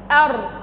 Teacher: ستلاحظ أن اللسان مقعر عند النطق بحرف الراء.